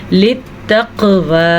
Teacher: پھر سے قاف کے اوپر قلقلہ ہو رہا ہے